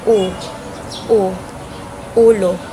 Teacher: At ang panghuli ay ang punemang U. Ang punemang U ay ah mataas na palikod dahil ang bahagi ng dila ay makikita sa likuran or sa likod.